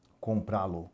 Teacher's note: A sílaba tônica, observe, está na última casa. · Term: oxítona